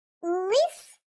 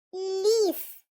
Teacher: В слові лис мене вимовляють л, а в слові ліс мене вимовляють ль.